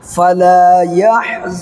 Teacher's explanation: یہاں پر نون کی آواز کو ناک میں چھپا کر کے پڑھنا ہے